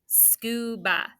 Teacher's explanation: That A is making the schwa sound. That's an open syllable exception.